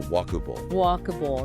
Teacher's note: But the emphasis, the stress is right at the beginning on walk.